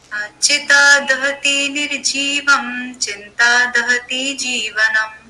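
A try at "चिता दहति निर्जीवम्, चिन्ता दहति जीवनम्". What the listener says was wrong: फिर दहती कर रही है दोनों बार। दहती बोलिए, बोलिए दहती।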